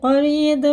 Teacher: را پورے ہیں کیونکہ رائے ساکن ہے، اس سے پہلے زبر ہے